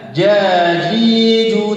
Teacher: Jim itu tidak memiliki huruf sifat hamas ataupun kalau diistilahkan dengan kalimat Indonesia adalah tidak berhembus, tidak ada desisan. Jadi ketika melafalkan huruf jim itu bukan ja. · pertengahan lidah yang dimantapkan ke langit-langit. Ini lidah dimantapkan itu ditempelkan. Terus ya ke atas ke langit-langit.